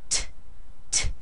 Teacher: beginning of this we're going to make this T pretty strong the T has quite a bit of air coming after it